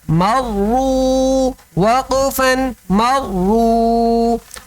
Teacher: اس میں پہلے مرو میں واو مدہ ہے کہ واو ساکن سے پہلے پیش آ رہا ہے تو کھینچ کر پڑھتے ہیں